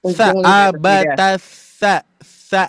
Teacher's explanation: ujung lidah bertemu dengan gigi sari atas. Jangan gusi ya, ingat. Bukan gusi. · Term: huruf tha